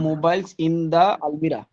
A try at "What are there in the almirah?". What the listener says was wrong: আলমিরা, একদম মাশাআল্লাহ হয়ে গেছে।